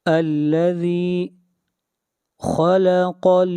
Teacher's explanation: خا اور قاف کو موٹا پڑھا جائے گا